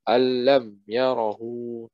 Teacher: nunnya berlebur langsung ke huruf lam.